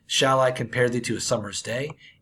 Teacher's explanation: tear pentameter is a seemingly scary word that literally just means five pairs of unstressed followed by stressed syllables